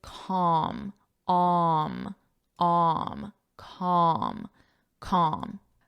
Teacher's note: This pronunciation, the L is silent.